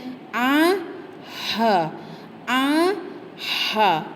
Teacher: Tengah kerongkong yang mana ada sedikit angin yang menolak huruf tersebut keluar